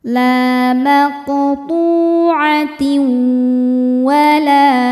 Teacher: Selanjutnya ada idgham bi gunnah karena ada tanwin kasrah menghadapi huruf waw. Cara bacanya tanwin dileburkan ke waw disertai dengungan.